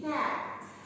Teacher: when we say A, it's relatively open and it's not so near to the roof of the mouth. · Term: open vowel